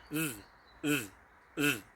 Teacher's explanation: you roll the tongue behind the top teeth of your mouth and you go zzz, zzz, zzz, like that.